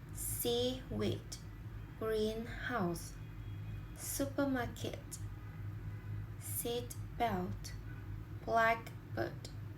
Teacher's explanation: the stress normally comes on the first part of the word